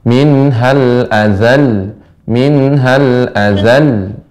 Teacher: Ya, kalau kita baca minal azal ini lamnya ee seolah cuma hanya satu padahal tasydid. Maka kita nabr untuk menjaga makna